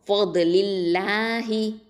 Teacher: அல்லாஹில் உள்ள லாமை வந்து தர்க்கிக்காக ஓதுவோம், லைட்டாக தான் ஓதுவோம்.